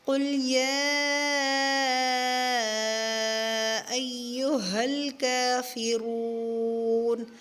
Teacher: را کو پر کریں گے، را کے اوپر پیش ہے۔